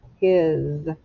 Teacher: notice the s sounds like a z